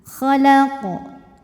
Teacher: dibaca secara memantul dengan pantulan yang besar namanya qalqalah kubra. Sebabnya karena qof ini sukunnya bukan sukun asli melainkan sukun karena berhenti.